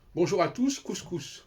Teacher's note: cette façon de prononcer le S à la fin, c'est quelque chose qui est complètement contraire aux règles de la prononciation française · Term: le français couscous